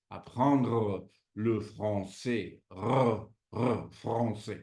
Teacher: Esta es la que usan en el francés la r o gárgaras